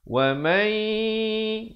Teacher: Cara bacaannya masuk beserta dengung dua harakat. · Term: idgham bi gunnah